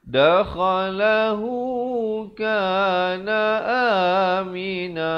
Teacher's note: Aminan bila waqaf menjadi amina dengan kadar 2 harakat